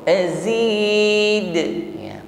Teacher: Azid ditutup dengan huruf dal, maka di sini nampak sifatnya qalqalah, tepatnya qalqalah kubra. Azid ya, pantulannya tampak lebih jelas karena berada di akhir ayat.